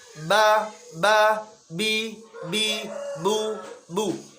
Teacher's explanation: Okay? Suaranya harus satu kali hentakan selesai. Nafas tertahan, suara tertahan.